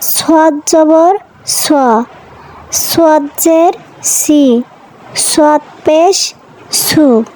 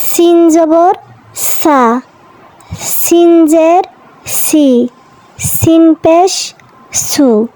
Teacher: সাদ এবং সিন জিহ্বার আগা নিচের দুই দাঁতের আগা থেকে উচ্চারণ হবে, তবে সাদ হবে মোটা, সিন হবে পাতলা।